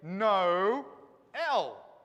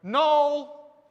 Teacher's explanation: we put those two vowels and we give them their sounds and we say them separately we don't put them together as a diphthong